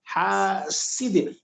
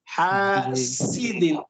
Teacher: فرق یہ ہے سین کو باریک پڑھا جاتا ہے